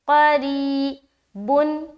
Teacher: री, या साकिन से पहले ज़ेर है, या मद्दा होगी, या मद्दा को एक अलिफ के बराबर खींचकर पढ़ेंगे, जैसे क़री बुन।